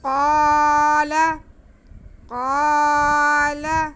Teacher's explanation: قاف کو کھینچیں گے، آگے لام پہ زبر اسے بالکل نہیں کھینچیں گے. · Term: الف مدہ